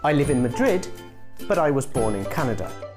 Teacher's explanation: the rising intonation is in the word Madrid, and the sentence still continue